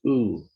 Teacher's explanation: Oo is high, back, rounded, long.